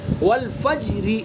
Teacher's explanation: یہاں را کے نیچے زیر ہے، یہاں پر وقف الروم کریں گے تو اس را کو باریک پڑھیں گے